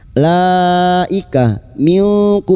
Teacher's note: bertemunya mad dengan hamzah dalam satu kalimat mad wajib muttasil lima harakat kita panjangkan.